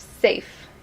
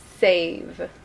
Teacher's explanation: we have safe it's shorter and then save the longer